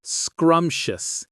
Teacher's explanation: Two syllables with a stress on the first one.